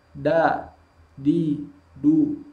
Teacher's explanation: Maka huruf dal ini syiddah. Maka ketika diucapkan, dia tidak mengalir bunyi hurufnya. Da, di, du, tidak mengalir.